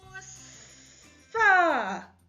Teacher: так чуємо звук с твердий приголосний